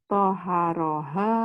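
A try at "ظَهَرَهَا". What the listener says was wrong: Nggak ada. Itu ada titiknya.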